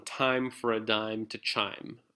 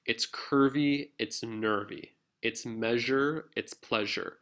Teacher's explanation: a feminine rhyme, which has multiple syllables and it's non-stressed on the last